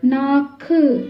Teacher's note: ஆகவே, சுருக்கமாக ஒலிக்கும் உகரமானது குற்றாலுகரம் என்று அழைக்கப்படுகிறது. இங்கே, 'உ' (உகரம்) என்ற எழுத்தின் ஒலி அதன் இயல்பான கால அளவை விடக் குறைவாக உள்ளது